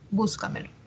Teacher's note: la mayor fuerza de voz está en la anterior a la antepenúltima sílaba